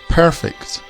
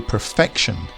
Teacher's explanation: we'd say perfect with the emphasis at the start of the word but we change that to perfection the emphasis moves to the middle